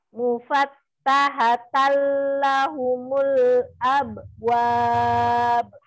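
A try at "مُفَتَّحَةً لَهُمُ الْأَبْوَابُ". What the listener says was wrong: Jangan jeda. Abwab.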